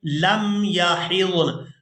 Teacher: اس لفظ کو وقف کی صورت میں اس طرح سے ادا کریں گے، لم یحضن، نون کو ساکن کر دیں گے، ہا کو ضاد ساکن اور نون ساکن کے ساتھ ملا کر ادا کریں گے، لم یحضن وَأُولَاتُ الْأَحْمَالِ۔